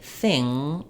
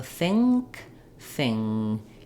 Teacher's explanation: the front of my tongue is down behind my lower teeth, and it's the back of my tongue that's lifting, kind of in the mid-palate, and it's the same place that I make the k and the g sound. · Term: ng sound